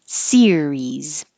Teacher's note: Series has two syllables stress on the first syllable series and remember keep your tongue very high very tense because